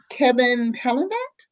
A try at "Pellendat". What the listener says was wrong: It's actually Pelenda. The T is silent.